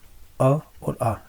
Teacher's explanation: अ और आ इनका उच्चारण स्थान कंठ होता है